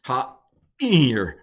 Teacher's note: Ayin is a heavy glottal stop.